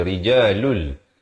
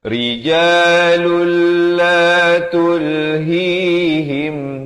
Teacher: Tapi bila datang lam idgham bila gunnah masuk tanpa dengung jadi rijalul.